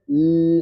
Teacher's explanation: suaranya ke mana? Ke samping kan? Celah di samping lidah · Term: inhiraf